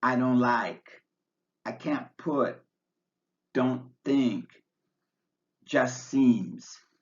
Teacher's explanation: say write not write and into it not into it finally the T drops out completely when it's between two consonants